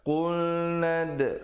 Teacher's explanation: khulnad ada khalqalah di situ. Khalqalah sughra